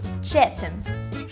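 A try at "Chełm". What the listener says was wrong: That's not a T. That's an L with a cross through it.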